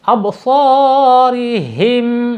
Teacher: Ketika ro-nya kasroh ini dibaca tarkik atau tipis. Absarihim ya.